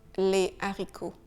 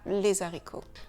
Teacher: Donc, on ne fait pas d'élision, on dit le haricot, on ne dit pas l'haricot. Et on ne fait aussi aucune liaison.